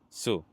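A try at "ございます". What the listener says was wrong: But the u on the su disappears. So arigato gozaimasu.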